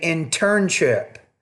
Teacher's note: I think you're trying to say internship, but you're not putting enough stress on the second syllable. You're not pronouncing that T with enough aspiration.